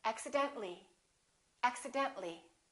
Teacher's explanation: we don't pronounce the I · When we add accidentally, we don't pronounce the A, we say accidentally.